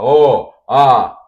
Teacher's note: o A e o O são vogais abertas, que a gente precisa abrir a boca.